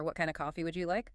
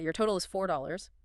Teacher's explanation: the intonation questions rising, statements falling